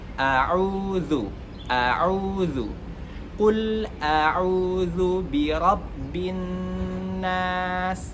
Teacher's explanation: Nah, tapi yang harus diperhatikan bahwa ain di sini itu tidak boleh keluar dari rongga hidung